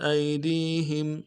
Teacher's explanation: حمزہ کو یا کے ساتھ ملائیں گے، یا لین بغیر کھینچے پڑیں گے، دال کو اگلے یا کے ساتھ ملائیں گے، یہ یا مدہ ہے اس کو ایک الف دال میں کھینچیں گے، ہا کو میم ساکن کے ساتھ ملائیں گے، میم ساکن میں غنہ کریں گے۔